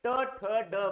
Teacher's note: त्या टाळूच्या मागचा जो भाग असेल त्याला मूर्धा असं म्हणतात, आणि या वर्णाला म्हटलं जातं मूर्धन्य वर्ण